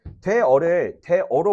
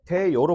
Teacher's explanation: 근데 어라는 발음이 여로 발음이 됐지. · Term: 반모음 청가